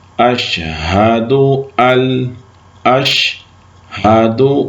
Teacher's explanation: وہ پڑھتے ہیں اشہد ان الہ، نون کو پڑھ دیتے ہیں. ہم نے نون کو نہیں پڑھنا، الف کو یعنی حمزہ کو لام سے ملا لینا ہے. تو ہم پڑھیں گے اشہد اشہد ال پڑھنا، ان نہیں پڑھنا.